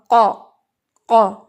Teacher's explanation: قاف heavy letter ہے، آپ نے زبان کی روٹ اٹھانی ہے، زبان کی روٹ اٹھائیں گے، پیچھے سے جڑ اٹھائیں گے تو یہ ادا ہوگا قا، قا، ٹھیک ہے.